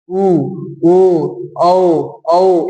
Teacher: उच्चारण में ओठ गोलाकार होता है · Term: वृत्तमुखी